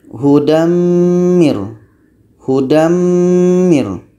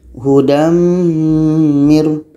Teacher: Tanwin hilang, masuk kepada bunyi mim. Masuk itulah yang disebut dengan idgham.